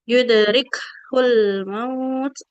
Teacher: aliran nafas di huruf kaf itu ketika sukun dia akan lebih kuat ya ketimbang dia berharokat